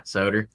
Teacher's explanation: the addition of an R sound at the end of a word